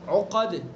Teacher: قاف کو پر، دال کے اندر قلقلہ